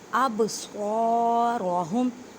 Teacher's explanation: صاد کو ادا کرتے وقت خیال رکھیں کہ سین کی آواز نہ آئے کیونکہ حروف مستعلیہ یعنی موٹے حروف میں سے ہے · را کو موٹا پڑھیں, را کے اوپر زبر ہے